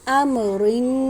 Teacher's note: را کو باریک پڑھا جائے گا، اس کے نیچے زیر ہے۔